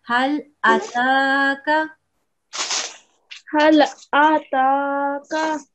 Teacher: 1 second for alif with the fatha and 2 seconds for the ta with the vertical fatha